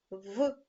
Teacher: це звук приголосний твердий дзвінкий